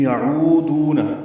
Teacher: یعودون، رو اور دو دونوں واو مدہ ہیں، عین وسط حلق سے ادا ہوگا، یہ واو مدہ ہونٹوں کی نا تمام گلائی سے ادا ہوگی، 2 حرکات لمبا کریں گے۔